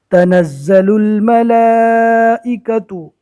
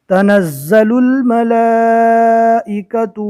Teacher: تنزل الملائکۃ، زا کے اوپر تشدید ہے، زا کو پہلے والے حرف سے ملا کر 2 مرتبہ اور سختی کے ساتھ پڑھنا ہے